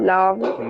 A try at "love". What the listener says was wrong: Wow, very good. Excellent.